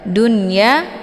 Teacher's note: nunnya dibunyikan secara jelas atau diizharkan